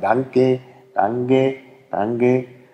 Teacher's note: die Franken sagen danke danke danke das ist bisschen zentralisiertes e · das ist ein bisschen zentralisiertes E. Das dürfte das andere umgekehrte E sein, was da genau kommt.